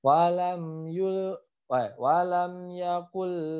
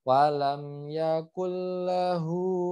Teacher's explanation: nun sukun bertemu lam, itu adalah idgham bila guna. Idgham tapi bila guna, dengan tidak guna.